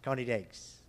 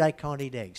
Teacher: So we don't say, "I'm afraid I can't eat eggs." We say, "I'm afraid I can't eat eggs." And the T might be tapped, which becomes degs, can't eat eggs, like the American water.